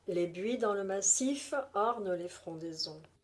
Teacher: SIF est accent tonique obligatoire comme marqueur de la césure. Orne implique un accent en tant que mot terminé par un E post-accentuel.